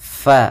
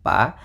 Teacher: Gigi kita yang atas menempel dengan bibir bawah